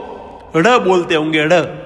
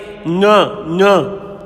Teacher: नाक से थोड़ा सा गले की ओर दबाव देकर के नाक से बोलना है।